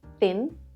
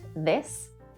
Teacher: The TH sound is actually 2 sounds, unvoiced, thin, and voiced, this. Your tongue comes out between your teeth.